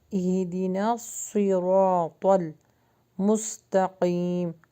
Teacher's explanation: صاد کا مخرج ہے، اس کو ہیوی پڑھیں